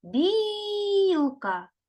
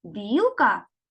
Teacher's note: білка перший склад наголошений